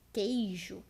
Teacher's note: Já a palavra queijo, nós temos três vogais juntas que ficam na mesma sílaba, porém nós não pronunciamos o som do U. E nesse caso não existe um tritongo, porque a regra do tritongo é uma regra fonética.